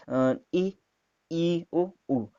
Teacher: ये 4 स्वर हैं जिनको बोलने पर सबसे कम मुंह खुलता है, या जो आपका मुंह है वो सबसे कम खुली हुई अवस्था में रहता है। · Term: संवृत स्वर